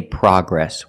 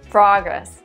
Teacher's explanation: the American pronunciation is progress with the short a sound like hot and stop